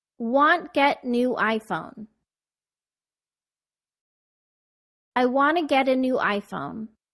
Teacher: Notice how want to became wanna.